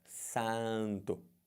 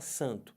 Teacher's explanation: você não fala dois sons. Você não fala o A e depois o som do N.